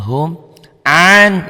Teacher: nun mati ketemu shad. Ini an n-nya bunyi nun matinya jadi tambah g jadi eng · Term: ikhfa